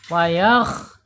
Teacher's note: Tenggorokan paling atas, harus dibaca tebal ya, tebal karena isti'ala dia. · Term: huruf kha